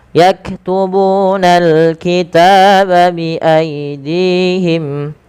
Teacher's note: panjangkan ta sepanjang 2 harakat karena dia ada alif kecil setelahnya